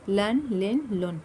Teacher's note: اس کو ہمیں پر نکلنا، لام نہیں پڑھنا ہے، اس کو باریک رکھنا، غیر مستعلیہ حرف باریک ہی رہیں. لام دو پیش لن، لن لن لن، لن لن لن اس طریقے سے نہیں پڑھنا ہے.